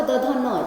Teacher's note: द ध न जो बोलोगे तो सब सीधे जीभ क्या होता है, दांत में सटता है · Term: दंत्य